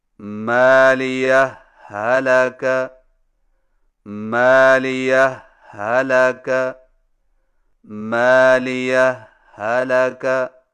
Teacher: دو الگ الگ ہاؤں سے پڑھیں لیکن پہلی ہا پر معمولی سا وقفہ کر کے لفظ حلقہ کی ہا کو بغیر تشدید کے پڑھیں، یعنی اس طرح مالیہ حلقہ، مالیہ حلقہ، مالیہ حلقہ. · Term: اظہار